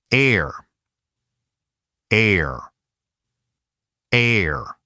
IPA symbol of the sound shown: er